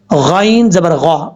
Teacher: غین حروف مستعلیہ میں سے ہے، پر پڑھا جائے گا